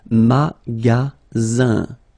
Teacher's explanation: only one S between two vowels. Then you get the sound Z, alright? And then the ending here is IN, so it's nasal, goes in your nose, and it's un.